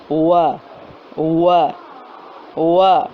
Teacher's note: ہونٹوں کو جو ہے وہ آپس میں نہیں ملانا، بلکہ مکمل گول بھی نہیں کرنا، کم گول کرنا ہے۔